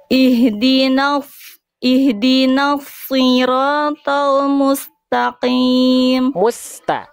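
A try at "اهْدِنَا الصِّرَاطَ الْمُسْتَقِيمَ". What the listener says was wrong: Huruf sin jangan terputus Bunda. Mustaqim. Harus terus jalan. Desisannya, aliran suaranya, aliran nafasnya. Huruf sin kan punya sifat sofir, berdesis. Hams mengalir suara. Rokhwa mengalir hams mengalir nafas. Rokhwa mengalir suara. Semuanya jalan.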